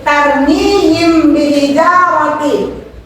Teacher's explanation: membacanya dengan menyamarkan suara mim dan dengan suara dengung guna selama satu alif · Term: Ikhfa safawi